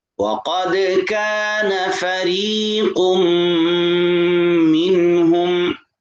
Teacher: فریقم پہ غنہ ہوگا، منہم پہ غنہ نہیں ہوگا، من نون کے بعد حرف حلقی ہے ہا، اس وجہ سے غنہ نہیں ہوگا۔ حروف حلقی جہاں آ جائے نون کے بعد تو وہاں غنہ نہیں ہوتا۔